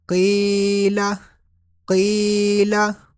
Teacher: قاف یا زیر قی، اس کو پر پڑھیں گے قاف کو، اور یہاں پر یا مدہ ہے اس لیے تھوڑا سا لمبا بھی کریں گے. لام زبر لا، قیلا قیلا.